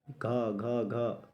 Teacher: घा वर्ड जो है कंठ से निकल रहा है